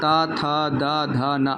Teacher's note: जब आपकी जबान जो है दांत में टच हो बोलते समय तो वो दांत वाली ध्वनियां हो गई